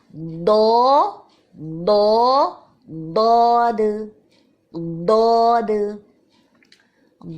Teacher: حرف ضاد کے اختتام میں بھی دال کی آواز آئے گی جو کہ باریک ہوگی